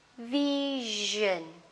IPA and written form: 'vɪʒn (vision)